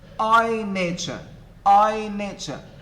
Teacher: the syllables in the first foot the two syllables both are stressed as you can see in the underlining i nature i is